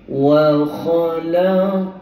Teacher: Untuk huruf qaf dengan ta, walaupun qalqalah sughra tapi tebal juga sebab dia lantunkan diri dia sendiri.